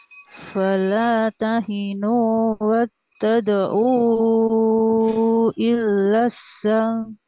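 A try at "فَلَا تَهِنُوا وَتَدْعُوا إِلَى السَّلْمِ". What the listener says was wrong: Hati-hati lamnya Bu. Di sini lamnya tidak ada tanda tasdid Bu ya. Tadi lamnya ketasdidkan. Illa gitu.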